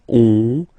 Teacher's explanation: Final S not pronounced, and then when you get this ON combination, you get this nasal on, really in your nose